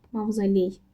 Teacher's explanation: Mavzoley sözündə O A-ya keçdi. Artıq həm birinci, həm də ikinci hecasında var. Ona görə bu da getdi.